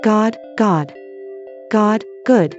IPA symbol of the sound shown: g